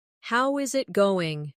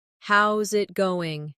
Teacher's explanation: Instead, "How is it going?" becomes "How's it goin'?" The is disappears, and the final G in going often softens. This is called connected speech.